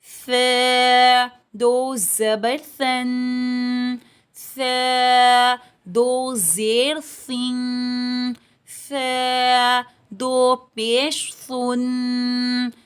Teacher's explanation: دونوں دانتوں کے درمیان زبان کو رکھ کر ثا پڑھی جاتی ہے